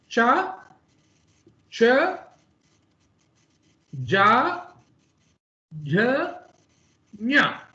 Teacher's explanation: it is not coming from the neck, but it is coming from a little more upper region in your mouth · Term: talavya